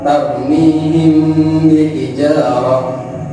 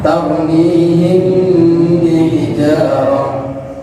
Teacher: mim sukun bertemu dengan huruf ba dibaca samar disertai dengung, yaitu ikhfa syafawi